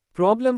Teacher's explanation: Problem second part lem is unstressed sounds like problem, not problem.